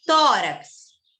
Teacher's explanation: você percebe que não era o rax, a sílaba forte, é no tó. Se é no tó, é na penúltima. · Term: paroxítona